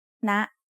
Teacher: High tone starts at a high pitch and rises very slightly.